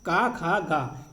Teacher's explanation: स्पर्श व्यंजन है। जो कंठ से निकलते हैं।